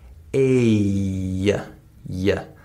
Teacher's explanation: if I say the vowel A, like hate, notice that there's a Y sound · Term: glide sound